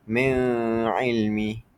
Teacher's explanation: Cara baca adalah bacaan sama dengan dengung dua harakat. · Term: idgham birunah